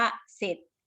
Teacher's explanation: ถ้าควบกล้ำนะคะจะควบกับตัวรอแต่จะไม่ออกเสียงตัวรอ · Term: คําควบกล้ําไม่แท้